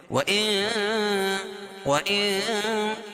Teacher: قاعدہ ہے کہ نون ساکن یا تنوین کے بعد حروف اخفا کے 15 حرفوں میں سے کوئی بھی حرف آئے تو وہ ناک میں آواز کو چھپا کر پڑھتے ہیں